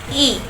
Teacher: Dikatakan sebagai vokal depan, bentuk mulut disebut tidak bundar, strukturnya tertutup karena saat kita mengucapkan mulut bergerak dan tertutup seluruhnya.